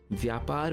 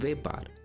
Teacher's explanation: The Sanskrit sound vya also becomes ve in Gujarati. So vyapar becomes vepar.